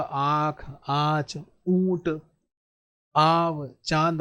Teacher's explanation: नासिका और मुख से दोनों निकलते हैं। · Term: अनुनासिक